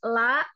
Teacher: punggung ujung lidah menyentuh gusi dua gigi seri atas